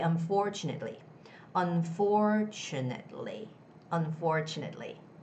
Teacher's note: you have to put the stress on that syllable where there's FOR. It's unfor, it's not to.